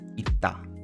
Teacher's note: if you have double S in 받침, it sort of creates a longer pronunciation, right? Because again, you have to swallow the double S, and if there is a consonant afterwards, it doubles itself, right?